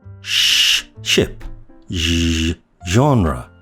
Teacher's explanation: The sh and zh sounds are palatio-alveolar fricatives, made by disrupting the airflow by bunching up the tongue against the roof of the mouth. The sh sound on the chart is shown in blue, which means it's unvoiced, while the zh sound is shown in green, which means that it's voiced.